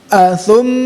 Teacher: Athum nah itu ya harus betul-betul maksimal, sempurna ya. Dengungnya atau rongga hidungnya ya. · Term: gunnah musyaddad